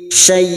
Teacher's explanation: Mad layin empat harakat kita panjangkan syai sambil kita lunakkan